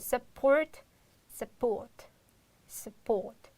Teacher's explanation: You will change into schwa sound the first U sound.